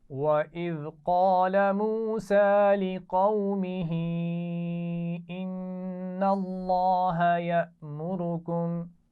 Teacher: ان اللہ، نون پر غنہ ہے اور لفظ اللہ کا لام موٹا پڑا جائے گا